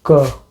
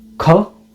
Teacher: the first one is basically normal k, and the second one is aspirated k, kh